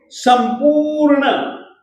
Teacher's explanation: प में जो उ की मात्रा है वह दीर्घ है और दीर्घ स्वर के उच्चारण के लिए दो मात्रा प्रमाण समय चाहिए। संपूर्ण र जो है वह मूल व्यंजन के रूप में है, तो इसको हम पूरा नहीं बोलेंगे।